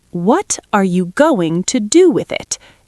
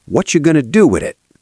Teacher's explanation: Every T is crisp. Every word stands alone.